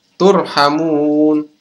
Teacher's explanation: Maka ini adalah mad arid lid sukun, dibaca panjang 2-6 harokat, teman-teman.